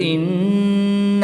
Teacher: نون مشدد میں غنہ کر کے پڑھیں گے